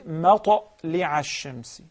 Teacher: the qalqala tends to go towards the fatha, not the kasra or the following, the previous letter.